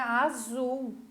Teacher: Azul é uma palavra oxítona, a última sílaba é a sílaba tônica, a sílaba mais forte